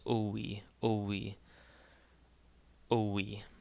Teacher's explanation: when you have the short o the Epsilon and the Yota then the Epsilon takes a w type sound and this becomes oi oi oi in this case similarly if